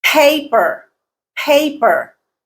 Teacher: pay is the stressed syllable